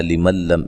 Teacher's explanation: نون ساکن کا یہاں ادغام بلا غنہ ہے، غنہ نہیں کریں گے